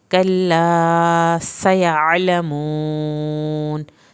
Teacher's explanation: सीन को सीटी के साथ पढ़ना है। कल्ला, अलिफ को पूरा पढ़ना है।